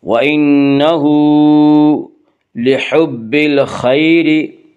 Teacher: وَإِنَّهُ ہا کے اوپر الٹا پیش ہے، الٹا پیش قائم مقام ہے واو مدہ کی، اس لیے الٹا پیش کو 1 الف کے برابر کھینچ کر پڑھیں گے